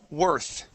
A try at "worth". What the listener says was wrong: Worth with a TH there. Worth. Okay, you're adding a T at the very end, saying worthed. Okay, so we want to add or end just on the TH. Okay, worth. At the end of the word, all we want to do is end with our tongue here. Okay, you're adding a T sound at the end, saying worth. Okay, we want to eliminate that T sound. Okay, so let's say worth.